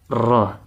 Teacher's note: Hurufnya itu yang terbagi merupakan bagian dari huruf tersebut yaitu ra. Ini mengucapkan satu huruf akan tapi seakan-akan mengulang huruf tersebut. Ra, ada getaran. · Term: takrir